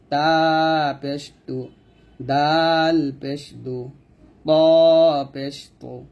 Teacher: ত টা মোটা হবে তাহলে এটা হবে তা পেশ তু আর তিনটা অক্ষর হচ্ছে জিহ্বার আগাটা উপরে দাঁতের ঘোড়ায় লাগবে